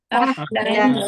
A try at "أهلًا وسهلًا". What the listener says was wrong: Ahlan wa sahlan. Jangan ahlau ya, tanwin bertemu waw, tidak dibaca macam tu ya. Ahlan wa sahlan.